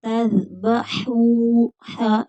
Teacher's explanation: ذال بغیر سٹی کے